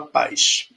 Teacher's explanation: então o som do S fica com o som de x